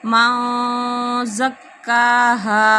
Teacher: ونفس وما سواہا فألہمہا فجورہا وتقواہا، کاف کے اوپر قلقلہ، وتقواہا قد افلح، قد دال کے اوپر قلقلہ، قد افلح من زکاہا، من نون ساکن کے بعد زار ہے تو یہاں پہ اخفا ہو رہا ہے